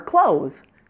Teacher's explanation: clothes as in shirts and pants and clothes as in close the door are pronounced exactly the same in American English they are both only one syllable long so really really easy